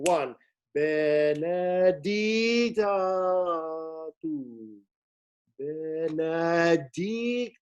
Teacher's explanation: the word stress is on the third syllable